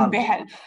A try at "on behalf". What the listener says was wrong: Not behalf. On behalf. Behalf. So the L is not pronounced. On behalf.